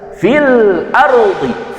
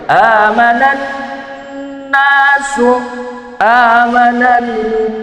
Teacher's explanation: Amanan nasu merupakan idgham syamsiah yang mana lam takrifnya tidak dibaca dan dimasukkan kepada huruf yang kedua.